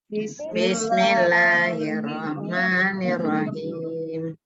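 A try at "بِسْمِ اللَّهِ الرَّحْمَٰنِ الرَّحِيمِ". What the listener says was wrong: Nah, itu juga harus bunyinya harus jelas ya. Bismillahirrahmanirrahim. Jangan hanya sama semua, itu ada ha yang pertama itu berat ya, yang kedua Rahman itu ringan, jangan disamakan gitu ya.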